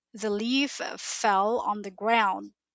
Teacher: light l sentences wherein you would feel that your tongue is more relaxed